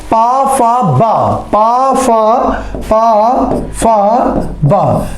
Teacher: बा आपका ओष्ठ ध्वनि हो जाएगी या ओष्ठ वर्ण हो जाएगा